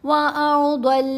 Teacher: ضاد دونوں جگہوں پر موٹا پڑھا جا رہا ہے، حروف مستعلیہ میں سے ہے